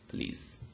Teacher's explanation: so there is no schwa. Schwa sound has disappeared